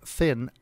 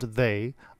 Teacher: The English sounds [θ] and [ð] as in the words 'thin' and 'they' are voiceless, and voiced dental fricatives, respectively.